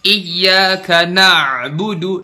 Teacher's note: Makhraj ainnya bener tuh di situ, di tengah tenggorokan. Na'budu, tapi kita lebay, kita terlalu tenggelam di huruf ain.